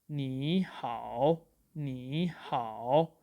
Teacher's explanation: if two third tone marks are following each other, then we change the first third tone mark into second tone mark, which is actually a rising tone, and the second third tone mark remains at its own place.